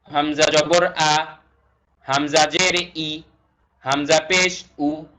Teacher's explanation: আ ই উচ্চারণটা নরমাল কণ্ঠনালীর একদম শুরু থেকে হবে তারপরে এখানে আছে আ ই উল্লেখ্য আলিফ এবং হামজার উচ্চারণ হুবহু